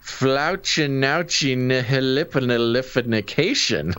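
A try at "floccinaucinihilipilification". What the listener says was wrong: No, you added an N in there. Flauchinauchinihilipilification. Okay, it's pronounced Flacus nos nihila pilaf cashin.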